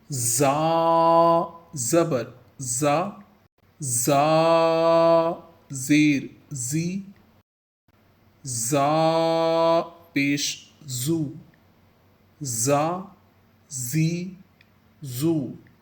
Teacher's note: یہ حرف صفیریہ ہے، اسے سیٹی سختی کے ساتھ ادا کیا جائے گا۔